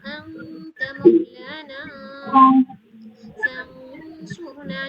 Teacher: نون کی آواز کو بالکل چھپا دینا ہے، ایک بھی نہیں ساؤنڈ آنی چاہیے نون کی آواز کی. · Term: اخفا